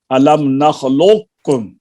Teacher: قاف کا مخرج اور ہے، کاف کا مخرج اور ہے، تو ادغام ناقص ہوا